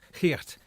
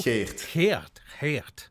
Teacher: It's almost like you scrape the back of your throat. Yeah. And then you open up your mouth really big.